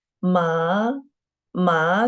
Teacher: second tone just from this third and raise up to the fifth · Ma, the first tone, which is the the highest tone, among the 4 tones, from the 5th to the 5th, which is the highest and flat. Ma, and second tone, just from the 3rd and raise up to the 5th.